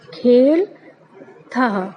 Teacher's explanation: था बोलना है, उसके साथ हा का उच्चारण करना है